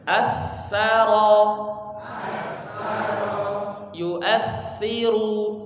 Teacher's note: ujung lidah dengan gigi seri atas digesekkan